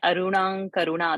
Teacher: So ka varga's 5th alphabet is ka, kha, ga, ghang, ng. So the anuswara will get ng pronunciation. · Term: anunasik